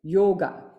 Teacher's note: letter o in the word yoga always carries two Matra kala